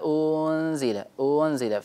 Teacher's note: نحذر من إشباع الضمة، إشباع الحركة قبل الإخفاء، فإننا إذا أشبعناها تولد منها حرف مد. ويقولون لولا أنزل، أنزل، فنضم ثم نرجع إلى الإخفاء مباشرة، أنزل هكذا.